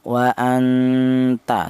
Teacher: Ikhfa itu artinya samar. yaitu cara bacanya nun mati ini disamarkan